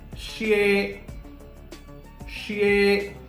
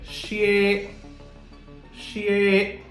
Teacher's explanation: I am sure you must have perceived that my voice is rising. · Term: Second tone